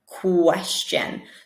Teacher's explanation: with this QU, we're really hearing a K, a K, followed by a W sound